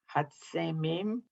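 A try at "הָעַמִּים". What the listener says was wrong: That second letter is a silent letter, the I, and it's not the very much alike.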